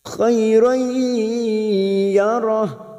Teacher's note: Dzarratin khairan, fathah bertemu ya sukun, kita leburkan khairan, fathah tanwin, fathah tain yang bertemu ya idgham bi gunnah, siap masuk dan mendengung, masuk ke huruf ya dan ditahan selama 3 harokat